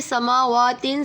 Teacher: سما پہ کھڑی حرکات ہو رہی ہے، اس لیے ایک الف یعنی دو حرکات کے برابر کھینچیں گے، وا کو بھی کھینچیں گے، وا پہ بھی کھڑی حرکات ہے۔